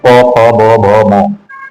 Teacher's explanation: हमारे जो दोनों लिप जो हैं आपस में मिलते हैं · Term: ऊष्ठ